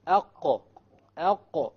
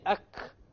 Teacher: you say ak, which is a kaf, you know that your tongue is hitting the hard palate, which is a mistake. It's supposed to hit the soft palate.